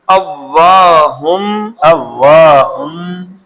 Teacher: ہن نہیں ہوگا بلکہ ہم، ہم ہوگا، میم آ جائے گی یرملون کے قاعدے کے تحت